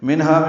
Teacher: منہا میں اظہار حلقی ہے، نون ساکن کے بعد ہا کی وجہ سے